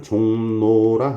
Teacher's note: 이응 뒤에 리을이 오니까 이 리을이 니은으로 교체돼서 발음이 됐습니다. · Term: 리을의 비음화